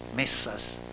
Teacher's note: desde su articulación dorso-dento-alveolar, sorda-tensa